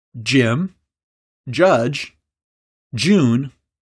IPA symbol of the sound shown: dʒ